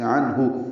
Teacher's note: عنہ، عین وسط حلق سے ادا ہوگا، نون ساکن پہ اظہار ہے، ہا اقصی حلق سے، عنہ، ہا کو جلدی پڑھنا ہے